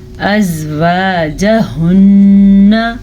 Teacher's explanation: ہا کے مخرج کا دھیان رکھیے گا اور نون کے غنے کو یاد سے غنے کے ساتھ ہی پڑھیے گا۔ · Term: غنہ